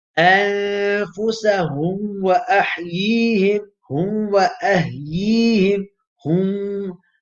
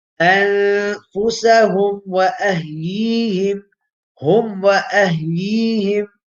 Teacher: I'm merging the meme into the vaw. Rather, here I should do izhar.